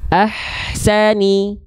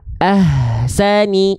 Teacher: Itu berbisik dari tengah tenggorokan. Ahsani. Yang keliru ahsani, itu jadi H besar. · Pastikan dilafalkan dari bagian tengah tenggorokan.